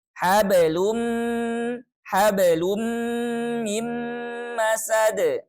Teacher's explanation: Nah, di sini konteksnya adalah dhammatain ketemu dengan mim. Nah, maka kita leburkan sempurna leburnya ya, tidak dibaca sama sekali tanwinnya, langsung ke mim. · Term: idgham bi gunnah